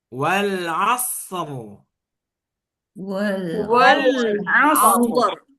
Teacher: Rnya pun tetap bunyi dengan tebalnya.